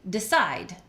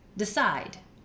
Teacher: side gets all the energy the first syllable is not stressed